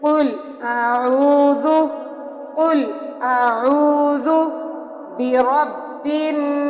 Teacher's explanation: سین کو سیٹی کے ساتھ سختی کے ساتھ پڑھا جائے گا. اس میں سیٹی کی آواز پیدا ہوگی